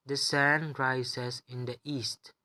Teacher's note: since this is a declarative sentence, it is just stating fact, which falls under rising falling intonation pattern 2 3 1, and we place level 3 on the higher pitch or the term which is stressed.